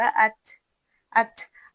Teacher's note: लेकिन ता में हल्की सांस की आवाज भी आपको सुनाई देगी।